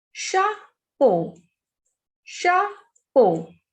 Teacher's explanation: The pronunciation of CH is sh in French. Sh. So CHA is sha, PEAU, po.